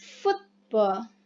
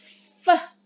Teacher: Labiodental using the lower lip and the upper teeth. Atau dengan kata lain, bibir bawah menyentuh bagian bawah gigi atas.